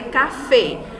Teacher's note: A última sílaba mais forte, ela é acentuada